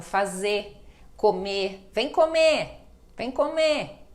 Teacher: o r final acaba sendo todo praticamente todo apagado